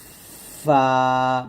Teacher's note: ফাটা পাতলা করে উচ্চারণ করতে হবে ফা বাতাসে বের হবে